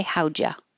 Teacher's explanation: I'm going to make the U change to ya and the D connect to the Y.